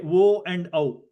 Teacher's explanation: both o and au are combinations of akara and ukara, whose sthanas are kantha and oshtau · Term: diphthong